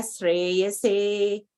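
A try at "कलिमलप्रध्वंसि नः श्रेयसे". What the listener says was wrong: half sha in between na and sha. There is a half sha. See, there are two dots in between na and shri. So you have to put sha, half sha. Pradvamsi na shreyase.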